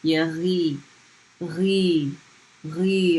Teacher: So if ya with the fatha ya, then you have the gargling G sound with a ya after it.